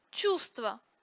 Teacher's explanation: например лестница произносится без звука т сердце произносится без звука д чувство производится без звука в